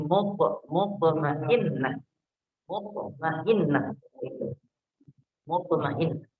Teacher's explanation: huruf to, to-nya sukun. Dan to ini termasuk huruf qalqalah. Artinya kalau dia sukun, dia mengeluarkan qalqalah atau pantulan. Nah, maka di sini kita pantulkan huruf to-nya.